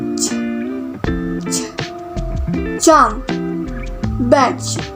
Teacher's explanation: Air is blocked with tongue just beyond the alveolar ridge, then released as a fricative.